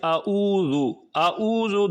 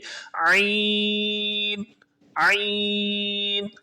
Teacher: تو یہاں پر حمزہ ہے اور اس کے بعد عین ہے۔ عین کو حلق کے درمیان والے حصے سے نکال کر پڑھتے ہیں۔ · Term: عین کا مخرج